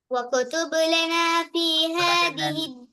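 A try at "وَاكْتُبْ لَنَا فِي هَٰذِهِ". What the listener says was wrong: வக்குத்துப்புன்னு ஓதப்படாது இப்பதான் சொன்னேன் என்ன இது. வக்குத்துப்புன்னு காஃபை கலக்க கேளுமோ சின்ன காஃபி வந்து இது ஒரு முறை சொன்னாலும் இது பலமுறை போல வருது மாறி மாறி.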